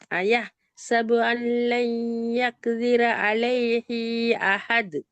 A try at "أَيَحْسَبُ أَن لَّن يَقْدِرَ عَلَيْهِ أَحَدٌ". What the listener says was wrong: இது ரெண்டு அலைஹி அந்த பிழை அப்படியே வருது. அலைஹின்னு ஏன் ஹாவ் ஆ கவனமாயிக்கணும், ஓத போகல வாய் மாறப்படாது. யக்திராண்டு ஓதில்ல, அது காஃப கலக்கணுமே, சுக்கூன் நிற்கிதே காஃபுக்கு. அந்த தால் கலக்கிறது போதாது.